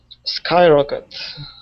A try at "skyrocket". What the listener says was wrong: Very good pronunciation.